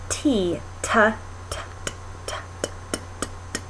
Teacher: that sort of noisy sound versus the sound like t where the tip of your tongue is coming all the way to the roof of your mouth and then it's being released down